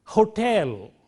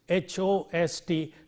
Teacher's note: a lot of breath force is required to produce friction here at the glottis